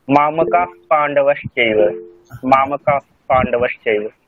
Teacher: আচ্ছা যেমন এই তিনটে সকার পড়ে থাকলে বিসর্গ চেঞ্জ হচ্ছে, আরেকটা আরেকটা হলো পরে প থাকলে ওটা একটা হালকা ফ উচ্চারণ, ফ উচ্চারণ, পরে যদি প থাকে হালকা ফ উচ্চারণ হয়, মামকা পাণ্ডবশ্চৈব, মামকা পাণ্ডবশ্চৈব।